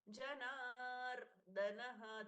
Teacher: द अल्प प्राण द कम force वाला